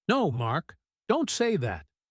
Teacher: Her voice gets louder and faster as she speaks. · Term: persuasion rhythm